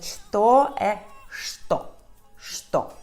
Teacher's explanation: que se lê como sh, igual à combinação CH em português